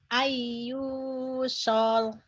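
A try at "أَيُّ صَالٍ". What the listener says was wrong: Solnya pendek. Ayu, sol.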